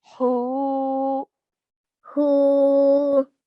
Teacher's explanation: And then we have a ha with a dhamma, followed by a waw sakin. And this will be a waw madda, so a letter of prolongation. So we're going to stretch for 2 counts.